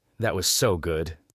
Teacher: The emphasis on so carries all the emotion.